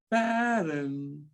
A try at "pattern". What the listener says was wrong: Good. Get that hard D in there for me.